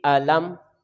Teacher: लाम को हम मीम के साथ मिलाएंगे तो ये गैर कलकला है